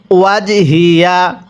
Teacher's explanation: এই হাগুলো উচ্চারণের সময় গলার মধ্যে একটু আওয়াজ করে পড়তে হবে